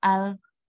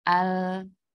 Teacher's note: Adapun ketika sukun nah dia harus mengalir sedikit karena dia memiliki sifat tawasut jadi suara kita harus menggali sedikit tidak boleh berhenti misalnya Al